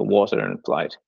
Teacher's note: Well, one thing that stands out to me is the T sound in a word like water and at the end of the word flight and so on. There's a tendency in Irish dialects to pronounce that more like an SH.